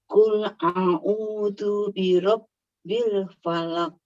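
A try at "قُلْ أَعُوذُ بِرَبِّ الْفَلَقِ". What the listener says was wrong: Falaq ya, mantul kol-kolan. Enggak apa-apa, nanti dilatih AU-nya.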